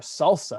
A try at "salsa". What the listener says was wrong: It sounded like you said salsa, like rhymes with Tulsa.